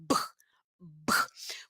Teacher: os lábios estão unidos, ó, a boquinha está fechada e o ar explode